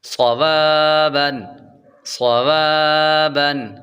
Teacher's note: واو کے بعد الف حروف مدہ ہے، اور پیچھے صاد حروف مستعلیہ یعنی موٹے حروف میں سے ہے تو صاد کو پر پڑھیں گے